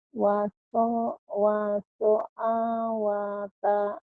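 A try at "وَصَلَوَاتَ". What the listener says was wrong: Itu A. Bukan A tapi lam. Washolawata.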